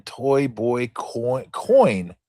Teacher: Starts with an O sound and glides to the E sound. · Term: gliding vowel